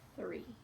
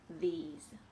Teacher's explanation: Now we have a vibration in our throat. Now we're using our voice. We're using more than just our breath. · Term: voiced TH